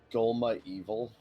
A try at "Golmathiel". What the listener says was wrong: It's pronounced Golmathiel. V is TH.